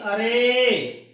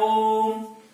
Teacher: दीर्घ स्वर से दोगुना समय लगे उन्हें प्लुत स्वर कहते हैं